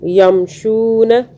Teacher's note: پھر شو جو ہم کر رہے ہیں، شین کو ہلکا سا کھینچ رہے ہیں، شین کے آگے واو ہے تو ہم نرمی سے کھینچ رہے ہیں۔